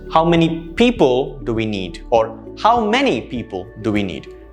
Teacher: you will let the intonation fall towards the end